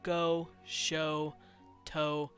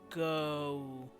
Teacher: every time you hear the word o or go show toe it will always do this like transition into an oo noise